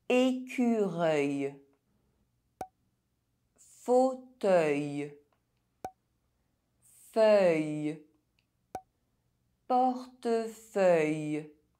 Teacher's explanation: EUIL and EUILL are pronounced [ɶj]